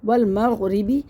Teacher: را کو باریک پڑھنا ہے اور غین کو موٹا کرنا ہے